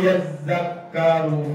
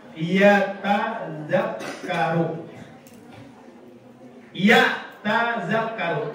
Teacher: Ta-nya diidgham dengan zal. Caranya adalah matikan ta. Sukinat ta'u, dimatikan ta.